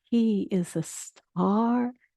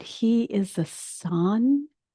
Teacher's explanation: The ah is wider. It's a pure ah. And the word sun is tinged with a little it tends a little bit towards the ooh, just a little.